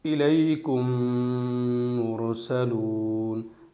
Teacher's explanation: ان دونوں میم کا ایک میم بنائیں گے، یعنی اس لیے میں نے ہجے میں اس میم کو نہیں پڑھا تھا ان دونوں کا، کیونکہ ایک ہی میم بن چکا ہے اور اس پر تشدید آ گئی ہے۔ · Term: ادغام شفوی